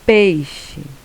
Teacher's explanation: o som do i é mais baixa mais fraco ele é uma semivogal · A palavra peixe, o E vai ser a vogal e o I é a semivogal.